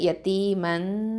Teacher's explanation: மீம் ஃபத்ஹத்தைன் இருக்குது, இங்கே தன்வீன் இருக்கிறதுனால அடுத்த எழுத்து என்னன்னு பாருங்கள், ஜால் வந்திருக்குது. அப்போது இங்கே எஃபா பண்ணணும், மறைச்ச ஒன்றா செஞ்சு ஓதணும் சாக்கினாவை